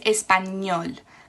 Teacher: That finishes in a consonant which is not N or S. It finishes with an L. So español, the stress is on the last syllable.